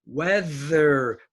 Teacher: the th is in the middle of the word so it's voiced